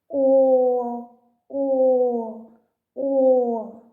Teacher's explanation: губи витягнуті вперед зуби закриті губами а язик лежить на дні ротика і не заважає проходенню повітря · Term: звук о